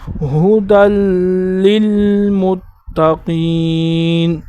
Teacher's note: یہاں پر یا نہیں پڑھیں گے، دال کو لام کے ساتھ ملا کر پڑھیں گے